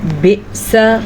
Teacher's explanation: بئس حمزہ کے اوپر ساکن کی وجہ سے ہم نے جھٹکے کے ساتھ پڑھا